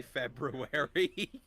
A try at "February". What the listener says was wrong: It's how my dad says February. I'm pronouncing the first R. February.